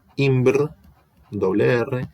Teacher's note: La S, por asimilación regresiva, se volviera una R, imbr, doble R.